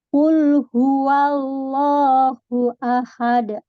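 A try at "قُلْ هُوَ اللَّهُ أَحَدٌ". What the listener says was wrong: Tinggal ketebalan saja. Tinggal ketebalan saja. Qul huwallahu. Qul huwallahu ahad. Masih ingat tabkhim itu apa, Bapak Ibu sekalian? Tabkhim atau cara membaca tabkhim tidak hanya tebal tapi namanya menggemukkan suara, Istilahnya menggemukkan suara. Jadi awalnya tipis, meskipun qaf tebal dulu ya. Qul huwallahu. Qul huwallahu ahad. Nah, cuman hati-hati. Jangan terbawa ke ahadnya. Ahadnya tetap tipis, ya.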